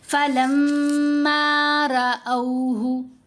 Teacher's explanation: حمزہ کے اوپر زبر، ساتھ واو لین، او آواز بنی